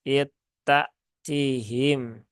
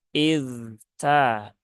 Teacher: pertemuan mutaqaribainnya tidak dibaca dengan idgham, tetapi dibaca dengan izhar. Sehingga zalnya jangan dihilangkan. Zalnya jangan diidghamkan.